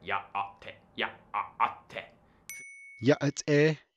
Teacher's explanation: glottal stops in words like yá'át'ééh